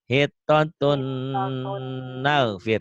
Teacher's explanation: Dibacanya N-nya hilang. Tapi hilangnya nggak kelihatan ya, karena masuk N lagi. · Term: Idgham diguna